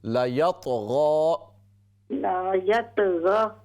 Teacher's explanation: لام کے زبر کو لمبا نہ کیجیے. لا لام زبر لا شارٹ.